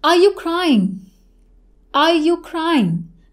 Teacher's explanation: Are you crying? Now towards the end, I'm increasing my tone, and that is the intonation will go up in closed end questions.